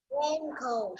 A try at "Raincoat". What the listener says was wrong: Good job. Very good. Still remember.